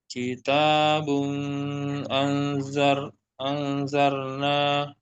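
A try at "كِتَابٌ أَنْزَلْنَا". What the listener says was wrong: Maaf. Jadi enggak dibaca dengung.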